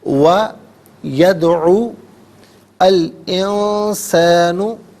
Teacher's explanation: یدعو میں دال ساکن ہے، لیکن چونکہ حرف قلقلہ ہے تو یہاں پر ادائیگی میں آواز لوٹتی بھی محسوس ہونی چاہیے